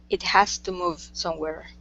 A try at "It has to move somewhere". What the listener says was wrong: Okay, very good.